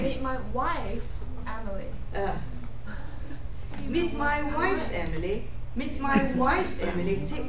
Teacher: I'm pronouncing Emily with a slight rise but uh wife is very loud · wife should be louder than Emily